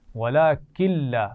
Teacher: نون ساکن کے بعد لام ہے تو ملا کر تو پڑھیں گے لیکن غنہ نہیں کریں گے